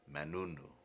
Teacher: Te, man remains man, and the te disappears.